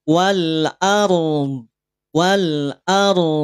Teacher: setelah dibunyikan ro dalam keadaan tebal masuk Bunyi pada huruf Dod Dod dari mana makhrajnya dari sisi lidah nempel dengan geraham kiri atau kanan atau dua-duanya